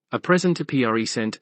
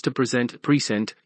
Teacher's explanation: the noun has its word stress on the first syllable, and with the verb, the stress falls on the second syllable